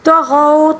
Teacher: طغوا، طا کو پر پڑھیں گے، غین کو بھی پر پڑھیں گے۔ غین کو سب سے حلق کے سب سے اوپر والے حصے سے ادا کیا جائے گا، ٹھیک ہے۔ اور واو لین ہے یہاں پر، طغوا واو ساکن سے پہلے والے حرف کے اوپر زبر ہے، اس کو واو لین کہا جاتا ہے۔